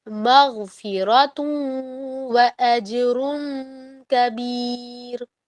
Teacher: تو واو میں ہو رہا ہے غنہ, ناک میں دو الف کے برابر, اور ناک میں غنہ کا مطلب ہے کہ خالی غنہ ہے, مغفرتن نہیں ہے, مغفرتن.